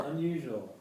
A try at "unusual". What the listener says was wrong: I feel like you're dropping a syllable compared to me. Unusual, I go. Yours is more caramel on the ear. Unusual.